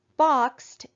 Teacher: when suffix e d comes after an unvoiced sound it's gonna make the t sound